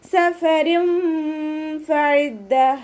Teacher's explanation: സഫരും ഫഇദ്ദ, ഫ ലൈറ്റ് ആക്കിയിട്ട് കൊടുക്കുക കേട്ടോ. മേലെ മുൻപല്ലിൻ്റെ അറ്റം താഴെ ചുണ്ടിൻ്റെ ഉൾവശത്ത് നനഞ്ഞ ഭാഗത്ത് വെക്കുക.